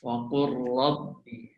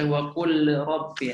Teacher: Udghimat firra, ya. Jadi huruf lam dimasukkan ke dalam huruf ra terus, macam tak ada huruf lam. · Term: idgham